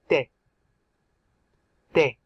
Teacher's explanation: There's no breath. You just put your tongue at the back of your front teeth and you say de. You try. It's like a th, but there's no breath.